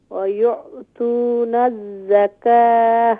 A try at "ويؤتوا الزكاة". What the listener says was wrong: Don't read wow. ويؤتى joint with زكاة ز. تا joint with ز. ويؤتى الزكاة.